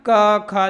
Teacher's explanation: क, ख देखो कंठ से बोले जाए